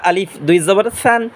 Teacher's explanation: সা উচ্চারণ করব জিহ্বার আগা সামনের দাঁতের আগার সাথে লাগাইয়া পাতলা আওয়াজে